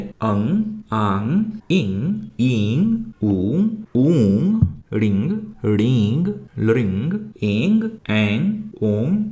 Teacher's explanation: इन सभी स्वरों के उच्चारण में मुंह के साथ-साथ नाक से भी आवाज आती है। इसलिए इन्हें हम अनुनासिक स्वर कहते हैं।